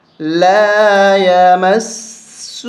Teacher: الٹا پیش بھی ہے اس کے ساتھ چھوٹی مد بھی ہے تو اس کو زیادہ کھینچیں گے